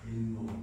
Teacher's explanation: 나도 모르게 니은을 첨가해서 발음하고 있잖아요.